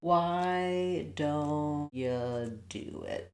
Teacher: And then U often gets reduced to more of a ya.